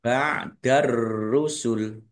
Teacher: tanwin bertemu dengan huruf ba bacaan iklab dibaca membalik tanwinnya dibaca mim dulu